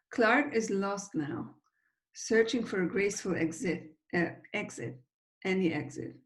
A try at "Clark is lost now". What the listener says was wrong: You didn't connect the K of Clark onto is. You said Clark is lost now, which is totally fine. But I think that we would probably connect them because is not such an important word in the context of a sentence. So it's probably not going to receive a kind of break in the sentence.